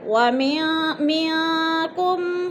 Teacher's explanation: منکم، من پہ اخفا ہو رہا ہے، نون ساکن کے بعد کاف حروف اخفا میں سے ہے تو ادھر اخفا کریں گے، آواز کو ناک میں چھپا کر پڑھیں گے